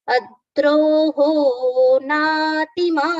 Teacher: In this word natimanita, we can see the first letter na is with the long, second letter t is short, again long letter ma, again ni is short, again ta is long.